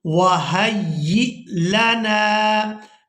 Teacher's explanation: यहाँ हमने हा को या मुशद्दद के साथ मिलाना है